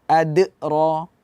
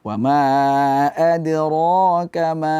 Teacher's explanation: tidak ada Hamzah di pantulan Qalqalah Jangan dibaca ad roah Jadi cukup dipantulkan suara saja W adrokama